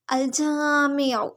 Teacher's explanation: جیم کو ایک الف برابر لمبا کریں گے، الف مد، میم کی زیر کو لمبا نہیں کریں گے، عین حلق کے درمیانی حصے سے، اور حرکت کو کھینچیں گے نہیں۔